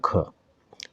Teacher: जो ख है वो हमारा अघोष महाप्राण है